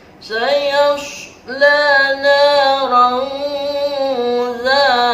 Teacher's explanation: Dibacanya tidak boleh jelas karena ikhfa, harus samar-samar, ada dengungan sedikit.